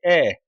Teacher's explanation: हिंदी में अ स्वर केंद्रीय स्वर है। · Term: मध्य स्वर